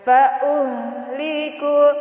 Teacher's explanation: kalau ada hak sukun itu bacanya dialirkan, karena hak itu mempunyai sifat rohawah